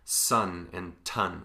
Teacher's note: manner this is how you make different sounds in one place the difference between say sun and tun which are both alveolar consonants